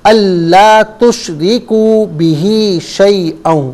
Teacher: اسی طریقے سے آپ نے اللہ تشرکو، آپ نے پڑھا اللہ تشرکو، تو اللہ لام الف زبر لا ہے، اسے ایک الف کی مقدار کھینچ کر پڑھیں گے. تشریکو میں کو بھی ایک الف کی مقدار کھینچ کر پڑھیں گے